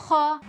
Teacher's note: خا حروف مستعلیہ میں سے ہے، موٹا کر کے پڑھیں گے